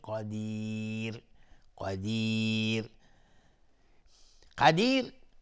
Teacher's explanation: قاف از حروف استعلاء غلیظ تلفظ میشه